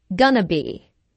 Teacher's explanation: instead of four syllables going to be there are three syllables